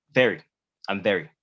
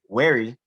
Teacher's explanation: yes students that is very important yeah but notice how chandler's lower lip sort of touched his teeth with the v